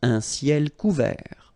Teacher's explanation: final T not pronounced.